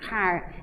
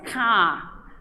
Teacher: no inglês dos Estados Unidos, o R é pronunciado muito mais claramente do que no inglês australiano e britânico, que quase sempre é silencioso, O R não é tão puxado, ele quase não aparece na pronúncia da palavra.